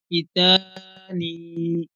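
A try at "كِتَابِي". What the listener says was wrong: নুন, নুন নয়, শেষেরটা এখানে নুনের নকটা উপরে হয়, আর বায়ের নকটা।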